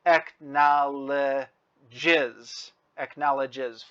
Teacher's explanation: because it ends with a j sound, when we put on the third person singular s, it adds another syllable. So we are now at 4 syllables.